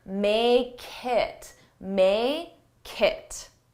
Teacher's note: to get rid of that pause, I take that k and I put it on the next word